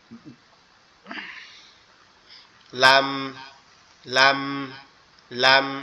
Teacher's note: লামটা হচ্ছে জিহ্বার আগা, তার উপরের তালুর সঙ্গে লাগায়া লাম।